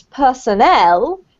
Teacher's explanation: personnel, with the emphasis on the last syllable